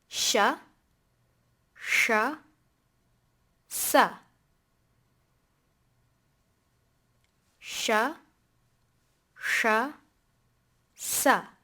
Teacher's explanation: There's a very subtle difference between the first sibilant and the second sibilant. The second one has more of a breathy quality, in addition to when pronouncing it, there's a little more space in the mouth. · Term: sibilants